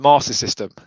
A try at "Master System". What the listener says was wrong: It's a Master System. There's no second R. There's only one R in it, and that's at the end.